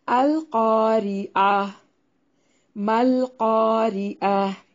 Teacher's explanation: قاف کو موٹا ادا کرنا ہے اور یہ الف مدہ ہے، را کو باریک پڑھنا ہے، عین کو واضح نکالنا ہے